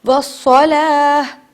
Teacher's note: جب ہم بھی وقف کریں گے تو اس تا کو ہا میں بدل دیتے ہیں